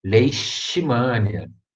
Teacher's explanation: Aí é o S bem chiado, S carioca, tá, gente?